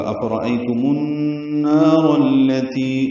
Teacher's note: حمزہ را جلدی پڑھیں گے، را پر پڑھیں گے، ایلین ہے، میم کو النار کی نون سے ملائیں گے، یہاں پہ غنہ ہوگا ، افرأیتم النار التی، را کو التی کے لام سے ملائیں